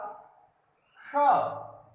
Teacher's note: श मूर्धन्य सा, यानी मूर्धा की तरफ हमारी प्राणवायु जाके टकराती है